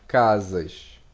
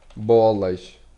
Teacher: en portugais, on prononce le pluriel, au contraire du français, où le S il n'est pas prononcé